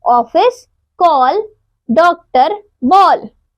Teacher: यह ए और ओ के बीच की ध्वनि है ए का प्रयोग केवल अंग्रेजी से हिंदी में आए शब्दों में